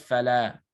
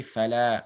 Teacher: it's the natural med, just 2 counts.